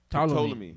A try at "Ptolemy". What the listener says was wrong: Yeah, Ptolemy. You don't when it comes to Ptolemy, you don't pronounce the P. Ptolemy.